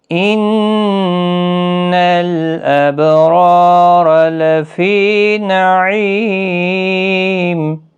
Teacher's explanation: نون مشدد پر گنہ ہوگا، با ساکن پر قلقلہ ہوگا، را الف مدہ ہے، پر بھی پڑا جائے گا، را بھی پر پڑا جائے گا، لفی نعیم، فی یا مدہ ہے، عی یا مدہ ہے، اور میم وقف کی صورت میں ساکن ہوگا، 3 سے 5 الف کی مقدار کے برابر کھینچ کر وقف کریں گے۔